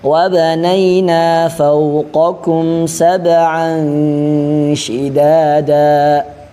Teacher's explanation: qof dia tebal. Sedangkan kaf dia tipis.